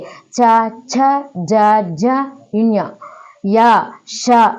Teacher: తాలువు యొక్క సహాయం తాలువు అనగా దవడ సహాయంతో పలకబడతాయి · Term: తాలవ్యములు